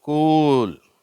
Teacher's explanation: வார்த்தை குட் அடுத்த வார்த்தை இங்க பாருங்க யூ போட்டு ரெண்டு புள்ளி வச்சிருக்காங்க அப்ப வந்து அந்த உ சவுண்ட்ல இன்னும் நீளமா சொல்லணும் லாங் வவ்வல் அப்படின்னு புரிஞ்சுக்கிறோம்